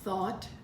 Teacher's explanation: Thought has the aw sound, silent GH.